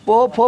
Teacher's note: पो, फो सट रहा है, ओष्ठ सट रहा है ना